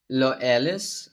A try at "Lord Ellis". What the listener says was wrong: Well, technically speaking, it's not supposed to be pronounced like that, but for American people, it's hard to pronounce the R, as you may know. So I just held them to say like Lord Ellis rather than Lord Ellis because it's way more easier.